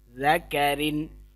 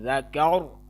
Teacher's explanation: اب وصلاً یہ را باریک پڑھی جائے گی اور وقفاً یہ را موٹی پڑھی ہے۔ ذکر، اگر وقف کریں گے تو را موٹی، اگر وصل ملا کے پڑھیں گے تو ذکرن یعنی را باریک ہوگی۔